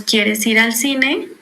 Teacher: Nosotros generalmente subimos al final la voz, bueno, el tono de voz para indicar que es una pregunta. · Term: entonación